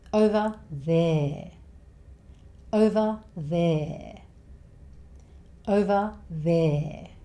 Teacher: just keep saying 'e', as in 'egg', 'e'. Make it longer.